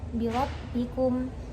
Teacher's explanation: apabila ro di fathah dan di dhammah seperti pada lafaz birabbikum. Nah, jadi ro-nya itu harus tebal. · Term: ro ketika tafhim